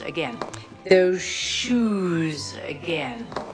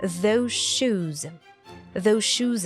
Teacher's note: you can't hear the the sound from those because it merges into the Sho sound from shoes